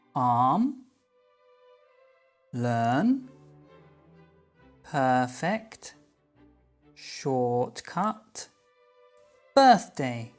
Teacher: Si te fijas, verás que la R es muda después de estos sonidos vocálicos.